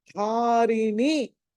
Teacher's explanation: ధా మళ్ళీ మహాప్రాణం కాబట్టి ఒత్తి పలకాలి